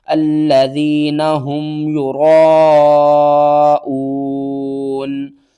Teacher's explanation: کیونکہ یہ جو الف ہے نا یہ اس کے ساتھ پڑھی جائے گی، ٹھیک ہے نا، اور مد کو ہم نے کھینچنا ہے، جسٹ جس حرف کے اوپر یہ مد آ جائے وہ حرف الگ نہیں پڑھا جاتا، ٹھیک ہے، یہ بات آپ نے اپنے ذہن میں رکھنی ہے۔ را کے اوپر زبر ہے، را کو ہم موٹا کر کے پڑھیں گے